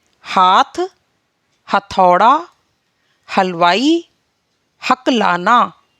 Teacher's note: हा का उच्चारण करते वक्त जीभ कंठ से रगड़ा खाती है, कंठ से रगड़ती है, तो इसी से हा वर्ड का उच्चारण होता है।